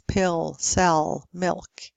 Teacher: L plus vowel would be clear, lip, light. Otherwise, speakers of British English would also have a dark L at the end